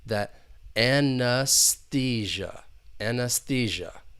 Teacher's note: The one thing that can be a little tricky are the two E's, because that first E, it's the schwa sound. It's an unstressed vowel sound. And that next E is the long E, because that is the stress syllable